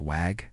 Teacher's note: in Mandarin Chinese, there is no V sound. Because of this, speakers might use a W sound instead. The word vague might be pronounced like wag.